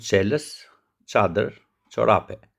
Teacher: Pozicioni i gjuhës është tek tingulli Ç. Maja rri mbrapa te dhëmbët e sipërm. Ajri del me forcë të lehtë, jo të fortë. Dhëmbët afër njëri-tjetrit dhe buzët janë të relaksuara.